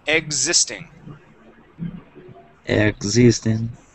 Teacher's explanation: So that X is going to sound more like a Z sound.